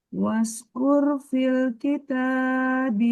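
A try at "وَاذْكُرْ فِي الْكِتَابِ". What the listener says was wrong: masih suka terbawa. Wad dengan was. Wad. Ujung lidahnya dinaikin ke gigi seri atas.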